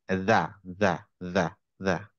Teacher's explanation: এই দাটা যখন উচ্চারণ হয় তখন আমরা জিভটাকে একটু বের করে আনি দাঁতে। দেখেন এখানে ছিল, সামনে নিয়ে গেছি, দা দা দা দা।